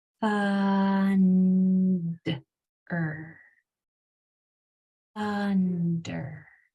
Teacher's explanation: I'm going to give you a hint. The hidden sound is right before the R at the end. It's so quick that it's hard to stretch and hang on to.